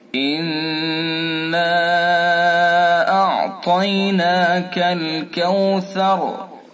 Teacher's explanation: نون مشدد ہے، اس کے اندر غنہ کریں گے